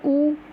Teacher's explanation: उसके बाद व्रतमुखी, जिन स्वरों के उच्चारण में होठ व्रतमुखी या गोलाकार होते हैं